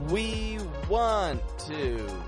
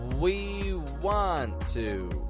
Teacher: We're stretching the lips out for both of those W sounds.